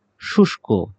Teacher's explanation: শুষ্ক, শুষ্ক শব্দটি আ এই যে মূর্ধন্য ষ এর সাথে ক রয়েছে, সেটি আমরা তালব্য শ এর মতো উচ্চারণ করব।